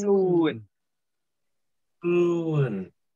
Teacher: đọc rõ âm u dài và âm sờ bật hơi ra một chút.